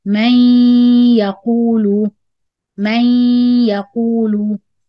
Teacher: So here the idgham will be in ya. We imagine there is ya second with gunna, then ya fatha.